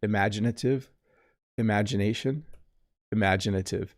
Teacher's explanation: i barely say the first vowel don't i